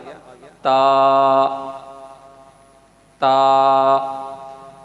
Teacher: آگے تیسرا لفظ آ گیا تا، تا، زبان کا آگے والا حصہ اوپر والے دانتوں کے ساتھ جب ہم لگائیں گے تو تا ادا ہوگا۔ تا کی آواز اوپر کی طرف جائے گی.